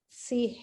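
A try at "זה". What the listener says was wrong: make it more like a Z, zay there.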